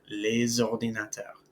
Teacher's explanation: That S becomes a Z sound. Les ordinateurs, some computers. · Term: liaison